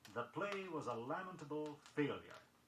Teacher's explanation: Be sure you accent the first syllable in the word lamentable